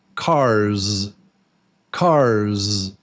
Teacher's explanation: Even though the letter is S, the sound is Z.